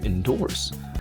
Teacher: it's got two syllables with a stress on the second one